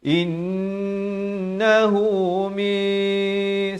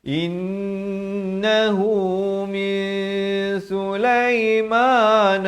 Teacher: Innahu min Sulaiman sekali lagi wajibul ghunnah. Nun sabdu ataupun mim sabdu, kedua-duanya dengungkan dua harakat